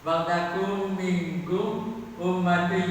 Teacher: Dari kata wal takun berubah menjadi wal takum. Bunyi nun matinya masuk ke mim